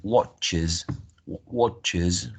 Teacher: all of this sibilant sounds like Shh they have an extra syllable added